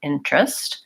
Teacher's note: It looks like it should be interest, and we actually pronounce it interest with 2 syllables. So we don't say this middle E, we just say interest.